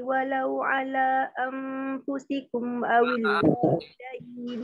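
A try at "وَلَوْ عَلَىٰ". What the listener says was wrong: Panjang-panjang. Walau ala panjang.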